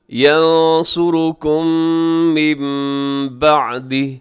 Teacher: یہاں میم بعدی میں نون ساکن کے بعد با ہے تو نون کو میم سے بدل کے اقلاب کریں گے